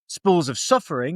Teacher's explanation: The alliteration of spools and suffering draws attention to it, giving a hushed, sibilant sound as if speaking softly about sorrow.